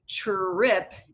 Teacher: And trip is a really tricky word because you have that affricate, the TR, and when you say trip, it sounds like a CHR